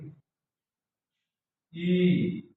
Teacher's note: अग्र स्वर, जैसे आगे की तालु से बोले जाते हैं